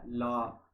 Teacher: जिह्वा से मसूड़े तक का स्पर्श जब होता है तो उसे पार्श्विक व्यंजन कह लेंगे